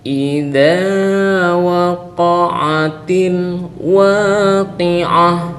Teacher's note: ini idza ini dipanjangkan dua harakat karena dia adalah mad thbi'i. Apabila fathah bertemu dengan alif maka dia menjadi mad thbiai.